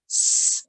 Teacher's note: It sounds like a clear s sound. S. My tongue isn't touching anywhere. You can hear a slight whistle sound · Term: seen